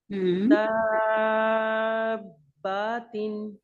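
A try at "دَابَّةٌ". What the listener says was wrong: نہیں با نہیں، با لمبا نہیں کرنا. دابتن.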